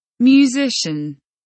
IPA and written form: mjuːˈzɪʃn (Musician)